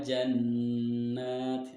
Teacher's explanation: hukum Disini yang pertama adalah regu nah sebab Nun bertasydid dan cara membaca dengan dengung dan ditahan dua harokat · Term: gunnah